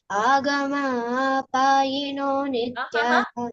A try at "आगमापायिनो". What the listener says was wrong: Agama. Apayino, why are you adding? Agama payino. Why are you adding one extra a? Don't add any extra. Agama payino.